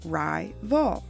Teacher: the first syllable ends with the long vowel sound i as in rye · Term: long i sound